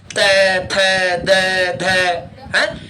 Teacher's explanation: त बोलकर देखो, दांत के पीछे वाला भाग और जीभ के आगे वाला भाग चिपकाना पड़ता है बार बार.